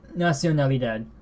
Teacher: The O gets nasalized at the end of it because it's being followed by a nasal character. But the O itself is not nasalized.